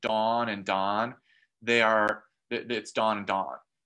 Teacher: There are some speakers in North America where aw and ah are the same sound, and so they've got 16 vowels.